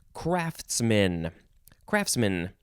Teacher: i don't really emphasize the the t too much